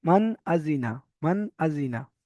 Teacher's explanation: নুন সাকিনের আওয়াজকে বিনা গুন্নায় জাহির করে তাড়াতাড়ি পড়তে হবে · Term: ইজহার